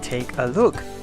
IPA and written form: tekəlʊk (take a look)